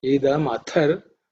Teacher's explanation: the tha is aspirated